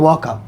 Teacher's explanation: जब व का उच्चारण करते हैं तो दांत भी आता है और ओष्ठ भी आता। तो दांत और ओष्ठ दोनों मिला देंगे तो दंतोष्ठ बना देगा।